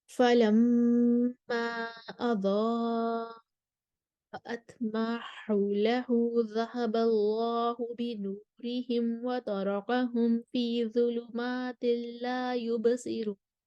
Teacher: سب سے پہلے ہم قالون کو لے کر آئیں گے کسر کے ساتھ، مد منفصل پر وہ کسر کریں گے اور مد متصل پر وہ توسط کریں گے اور عدم صلہ کریں گے